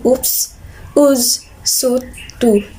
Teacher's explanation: high back tense round vowel, sound in oops, ooze, suit, to